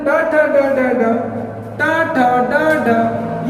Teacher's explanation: तालु के आगे वाला भाग, जो दांतों से थोड़ा सा पीछे है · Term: मूर्धन्य